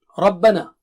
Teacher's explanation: Ra is thick and ba is thin.